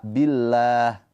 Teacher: Lafzul jalalah didahului harakat kasrah. Maka lafzul jalalahnya dibaca dengan tarkik tipis